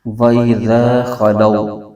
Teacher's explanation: ہے بغیر کھینچے پڑھیں گے، لو میں واو لین ہو رہی، واو ساکن سے پہلے زبر، واو لین کا قاعدہ، اس کو بھی بغیر کھینچے پڑھیں گے، لمبا نہیں کریں گے